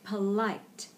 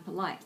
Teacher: you'll notice the first syllable there is a very neutral vowel, just p, polite, because the emphasis is on polite.